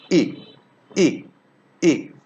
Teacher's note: this vowel is pronounced in the front centralized part of vocal tract front centralized part not not fully central not fully formed just